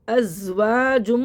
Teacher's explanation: زا میں سیٹی ہوگی، زبان منہ کے اندر رہے گی، ازواجم نہیں پڑھیں گے، زبان دانتوں سے باہر نہیں لانی چاہیے، کیونکہ زا میں زبان منہ کے اندر رہے گی، اور یہاں پہ سیٹی بھی آئے گی، سیٹی والا حرف ہے یہ.